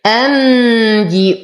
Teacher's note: لدينا نون ساكنة وبعدها الباء فالحكم إقلاب يحتاج إلى غنة